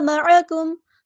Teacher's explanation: عین کو مستحلق یعنی مڈل تھروٹ سے ادا کرنا ہے